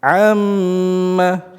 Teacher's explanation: Membaca gunah musyaddadah tersebut dengan ketukan tiga kali atau dengan genggaman jari kita.